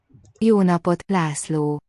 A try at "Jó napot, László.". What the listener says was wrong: Both those vowels are long. S is SZ. László.